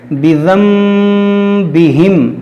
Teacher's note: यानी इस नून साकिन को मीम से बदलकर गुन्ना करेंगे। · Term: इक़लाब